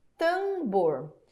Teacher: Perceba que o som do M a gente não ouve. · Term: dígrafo vocálico